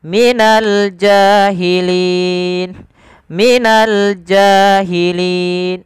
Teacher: Alif lam di sini diperjelas karena dia alif lam qamariyah. Ada alif lam yang bertemu dengan huruf jim, yang mana jim termasuk daripada huruf qamariyah, maka kita perjelas huruf lamnya.